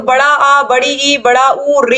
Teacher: दो दो मात्रा का समय लगता है या ह्रस्व स्वर की अपेक्षा दोगना समय लगता है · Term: दीर्घ स्वर